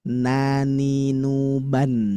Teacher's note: huruf nun itu ada di taraful lisan atau lidah bagian depan, maka bacanya yang lidah ini ditempelkan ke atas.